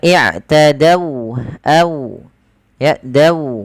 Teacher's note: Ada huruf waw yang dia sukun di dari fathah. Ini kita namakan dengan bacaan lin, yang dimana dia lembut di dalam melafalkan wawnya